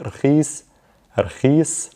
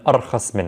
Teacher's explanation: we're switching the first two letters and we're getting rid of the E sound, which is represented by the ya.